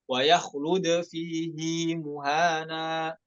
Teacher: نلاحظ صلة الهاء حيث تمد حركتين خلافا للقاعدة